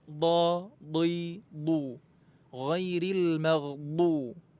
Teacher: Makhrajnya itu pertemuan antara tepi lidah dengan pangkal gigi geraham atas. Boleh sebelah kanan, boleh sebelah kiri, boleh juga dua-duanya. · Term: Huruf dhad